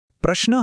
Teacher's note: यात प्र हे जोडाक्षर आहे आपण प अर्धा उच्चारतो आणि र पूर्ण